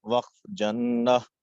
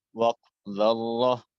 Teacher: وقف کرہ۔ یہ ساری مثالیں آخر میں گول تا ہے، اور گول تا وقف کی حالت میں ہا سے بدل جاتی ہے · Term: وقف بالابدال